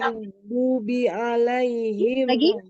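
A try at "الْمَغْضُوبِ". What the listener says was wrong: Maghdubi, maghdubi. Nah, jangan ada ge gitu ya. Nah, berarti dia masih ada tawaludnya. ke ghain. Ke tenggorokan atas. Maghdubi, maghdubi.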